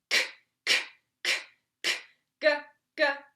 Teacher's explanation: k is just that back aspirate sound, so we don't actually want a vowel, k, just k, just straight K sound, and then the G, you can add a little bit of that vowel behind.